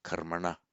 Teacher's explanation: the N becomes retroflex because of the preceding R, and the intervening M makes no difference